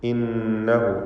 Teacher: ഇന്നഹു ഖബീറുൻ ബിമാ. ഇന്നഹു നൂൻ മുശദ്ദദയെ മണിക്കണം. ഹ ളമീറിനെ 2 ഹറക്കത്തിൻ്റെ അളവിൽ ദീർഘിപ്പിക്കുക. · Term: മദ്ദുസ്സിലത്ത്